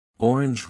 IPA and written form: ˈɔːrɪndʒ (orange)